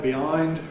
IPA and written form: bɪˈaɪnd (behind)